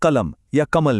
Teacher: जब हम हिंदी वाला नॉर्मल ल बोलते हैं जैसे कलम या कमल में तो महसूस कीजिए जीभ की नोक दांतों के पीछे छूती है।